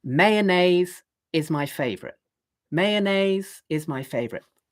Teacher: on that last syllable, favorite, then I go down because that's the end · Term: intonation